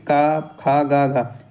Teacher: का वर्ग कहां से निकलता है कंठ से निकलता है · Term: कंठ ध्वनि